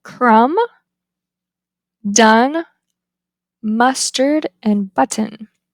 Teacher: The tongue is low mid, advancement is back central, the lips are unrounded, and this is a lax vowel. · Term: wedge